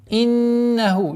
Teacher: Иннаху, четкое произношение огласовки кесра, удержание назализации в размере двух огласовок